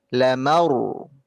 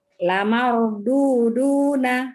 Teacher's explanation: huruf ro di situ sukun dan huruf sebelumnya adalah fathah. Jadi harus ditebalkan.